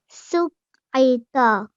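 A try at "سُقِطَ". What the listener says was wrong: Okay, just the end letter here, yeah? Just a little bit more round. Suqita. Su.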